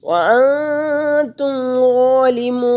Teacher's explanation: نون ساکن کے بعد تا حروف اخفا میں سے آ گیا تو یہاں پہ غنہ کریں گے، اخفا کریں گے، 2 حرکت کے برابر ناک میں آواز کو چھپائیں گے۔ وَأَنْتُمْ ظَالِمُونَ، वा खड़ी ज़बर एक अलिफ के बराबर खींच कर पढ़ेंगे।